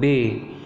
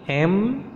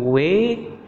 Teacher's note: bunyi-bunyi yang memang dihasilkan dari perpaduan antara bibir atas dan bibir bawah bunyi-bunyi ini disebut bunyi bilabial